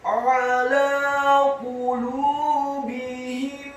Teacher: ain-nya ditekankan keluar dari tenggorokan bagian tengah fathah satu harokat. Huruf lamnya dibaca tipis, fathah dua harokat karena harokatnya tegak, dan setelahnya seperti ada huruf ya sukun yang fungsinya menambahkan satu harokat.